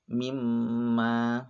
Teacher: contohnya mimma ini adalah bacaan gunnah dan harus dibaca panjang dan dengung. Panjangnya ingat 1 alif atau 2 harokat.